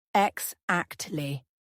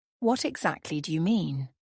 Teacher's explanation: exactly has the stress on the second syllable